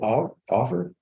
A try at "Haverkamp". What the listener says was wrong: Haverkamp. It's with an A.